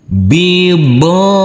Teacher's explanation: huruf bod dibaca panjang dengan panjang 2 harokat karena huruf bod yang berfathah a ini bertemu dengan huruf alif yang tidak berharokat.